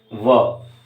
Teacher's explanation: दंतोष्ठ्य, दंत और ओष्ठ्य, दंत और ओष्ठ, दांत और होंठ दोनों का इस्तेमाल। व कहने में दांत और होंठ मिल रहे हैं कहीं ना कहीं, देखिएगा बोलते समय व, तो उसको केवल एकमात्र उस स्वर, उस वर्ण को रखा गया है दंत्योष्ठ में।